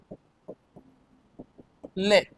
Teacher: वह व्यंजन जिसके उच्चारण में जिसके उच्चारण में जीवा पहले मसूड़ों को छूती है। · पार्श्विक व्यंजन, इसमें देखेंगे वह व्यंजन जिसके उच्चारण में जीवा पहले मसूड़ों को छूती है और हवा का प्रमुख वेग जीवा के बगल से निकल जाता है